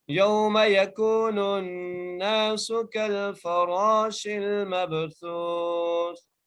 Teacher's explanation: سا کے نیچے زیر ہے، ہم وقف کی صورت میں اس کو ساکن کر دیں گے